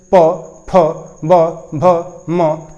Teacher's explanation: जिस अक्षरों का उच्चारण करते समय ओठ काम करे उसे हम क्या कहते हैं ओट अक्षर कहते हैं